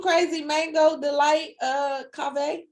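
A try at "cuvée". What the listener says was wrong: Is it a cave or cuvee? Cuvee. You said cave, something with an A.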